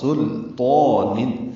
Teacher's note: سلطان میں غلطی یہ ہوتی ہے کہ لام باریک ہے، سین کے بعد لام باریک ہے، ساکن ہے اور اس پہ اظہار ہے اور تو پر ہے.